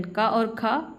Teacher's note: इनके उच्चारण में किसी प्रकार का कंपन नहीं होता है स्वरतंत्रियों में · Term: अघोष व्यंजन